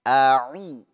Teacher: Harus dibedakan antara hamzah dengan ainnya. A'u, ya. Yang satu di tenggorokan bagian bawah, yang satu di tengah.